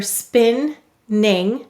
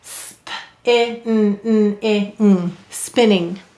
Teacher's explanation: the stress is on the syllable before the suffix, spin-ning